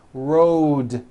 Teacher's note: Road also has a voiced D ending. Road. It's not wrote, unvoiced, it's road.